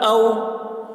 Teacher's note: واو ساکن سے پہلے زبر ہے، واو لین ہوا، اس لیے واو لین کو نرم آواز کے ساتھ جلد پڑھیں، معروف پڑھیں